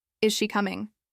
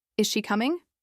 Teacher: If you say that with a flat tone, is she coming? It almost sounds like you're not really asking. Maybe you're just repeating something now. · Say it with a rise. Is she coming? It's a question now.